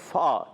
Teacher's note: جب اوپر والے دانتوں کے کنارے نیچے والے ہونٹ کے تر حصے سے لگتے ہیں تو ادا ہوتا ہے فا